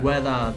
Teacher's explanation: In Australia, and I think maybe in New Zealand, we pronounce that ER at the end of words as more of an A sound